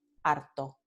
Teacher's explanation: En Andalucía, la palabra alto, tall, y la palabra harto, fed up, se pronuncian de la misma manera, con la vibrante simple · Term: neutralización de líquidas